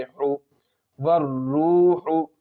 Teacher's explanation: ہا کے اوپر پیش کی حرکت ہے، پیش کی حرکت کو جلدی پڑھے